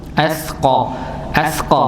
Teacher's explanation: Di lidah bagian belakang atau pangkali lidah bertemu dengan langit-langit tulang e bagian tulang lunak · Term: tempat keluarnya huruf